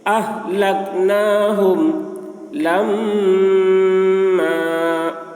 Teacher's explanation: میم مشدد ہے، میم میں غنہ ہوگا